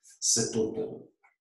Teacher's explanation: Ook weer de T verbinden met de klinker die volgt. Want vermits deze letter dof is, wordt die ook niet uitgesproken.